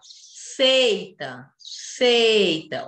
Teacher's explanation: o E é forte, o I só ajuda. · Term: semivogal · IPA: /i/